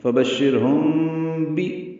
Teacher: وجہ سے اخفاء شفوی ہے، فبشرہم بی، با میں ہونٹ ملا دیں گے